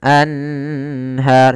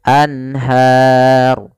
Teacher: suara nunnya harus jelas, tidak boleh ditahan. Anhar tidak, tapi langsung saja anhar. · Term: izhar halqi